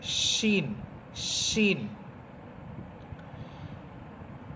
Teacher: আর সিন এটা বাংলাতে আপনারা দন্তস্ব এর উচ্চারণ করবেন, দন্তস্ব। আর শিন এটা হচ্ছে জিহ্বার মধ্যখান উপরের তালুর সাথে লাগবে, শিন, শিন। আর শিন এটা বাংলাতে এটা তালব্য এর উচ্চারণ হবে।